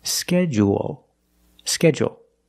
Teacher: So in both pronunciations, we end with a dark L, because the L is after a vowel at the end of the word